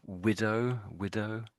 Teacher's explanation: the final W is almost basically sort of silent